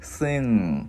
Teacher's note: Cái mình ngân cái chữ ng ra